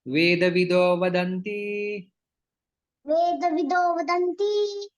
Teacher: विसर्ग का ओ में परिवर्तन हो जाता है